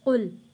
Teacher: قاف نقطے والا ہے، اس کو ہم نے موٹا پڑھنا ہے. لام کے اوپر جزم ہے.